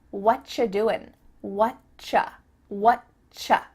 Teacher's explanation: And actually, we've cut out completely the word are, and the word you just becomes cha. What ya doing?